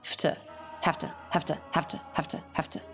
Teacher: low in Pitch said quickly simply without much mouth movement